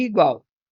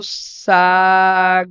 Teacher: semivogal mais vogal mais semivogal isso também é o tritongo